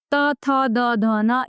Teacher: इनको बोलने में हमें दांतों का इस्तेमाल करना पड़ता है।